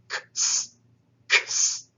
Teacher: But it makes the sound of the English letter X. This is actually a sibilant sound. It has a hissing sound connected to it. It is, if you think of it this way, a kappa followed by a sigma. · It is, if you think of it this way, a kappa followed by a sigma. It's a k-s, and it is not voiced. You simply pronounce like a K and an S sound together. K-s, k-s. So this is called a velar sibilant, and it is voiceless.